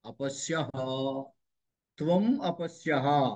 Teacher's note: సకారపు పొల్లు సకారపు పొల్లుగా ఉండదు అలా ఉండదు అది విసర్గ మారిపోతూ ఉంటుంది చివరు ఉన్న సకారం విసర్గగా మారిపోతుంది